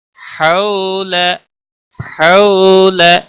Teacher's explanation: واو ساکن سے پہلے جب بھی زبر ہو تو واو لین کہلاتا ہے، تھوڑا نرمی کے ساتھ کھینچ کر پڑھیں گے